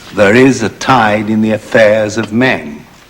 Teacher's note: this is a regular line except that there are only four strong stresses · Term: 4 strong stresses